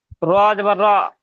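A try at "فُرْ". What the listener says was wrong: না না না, র উ ফুর, তাহলে এখানে আবার ধরে পড়বেন, তিনটে পড়বেন তো একসঙ্গে। র উ ফুর, একটা একটা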